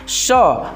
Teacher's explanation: श हम जानते हैं कि ये तालव्य होता है, इसका मूर्धन्य नहीं होता है।